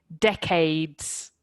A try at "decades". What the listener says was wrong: Perfect, very good.